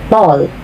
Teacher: T is pronounced further back on the tongue